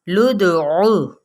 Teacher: اب ہم اس کو قا نہیں پڑھیں گے، لام کی پیش کو دال کے ساتھ ملاتے ہوئے دال پہ قلقلہ واضح طور پر، لدعو، او کو لمبا نہیں کرنا، ٹھیک ہے، کیونکہ حرکت ہے